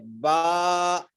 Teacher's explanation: با ادا ہوتا ہے دونوں ہونٹوں کے کچے حصے سے، تری والے حصے سے با ادا ہوتا ہے، دونوں ہونٹوں کا جو تری والا حصہ ہے اس سے با ادا ہوتا ہے۔